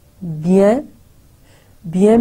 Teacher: So je, e silent ho gaya, ve, is silent ho gaya, s rather, bien, bien mein bhi n, jaise hum bon, bonjour, to jo n hai, jaise urdu mein noon gunna hota hai, nasal sound, wo naak mein reh jati hai, hum pura usko pronounce nahi karenge.